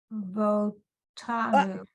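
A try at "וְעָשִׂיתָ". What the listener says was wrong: Why would you say vo? Isn't there a letter there before the vowel?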